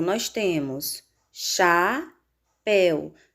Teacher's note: Na palavra chapéu, nós temos chapéu. Sílaba mais forte, péu. Se a sílaba tônica é péu, terminada em ditongo el, essa palavra deve ser acentuada.